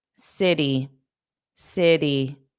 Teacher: So the T in city becomes a soft D. City D. Not T T.